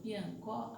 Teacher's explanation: Por exemplo, do piancó, a sílaba que a gente pronuncia com maior intensidade é o có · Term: sílaba tônica